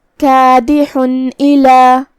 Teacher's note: اظہار کا معنی ہے ظاہر کرنا، جو کہ تنوین کی اصلیت نون ساکن ہوتی ہے تو ہم یہاں نون ظاہر کریں گے اور بغیر غنہ سے یہ حکم کو ادا کریں گے